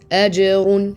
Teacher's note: The jim has qalqala or a bounce. · And the ra has tafkhim, it's strong. And here we have tanween, but it's gonna be idhar.